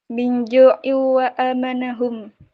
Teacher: Kasroten bertemu dengan wau, hukum bacaan idgham biguna. Dibaca dengung.